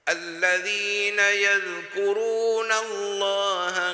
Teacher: le mot Allah nous prononce plein la bouche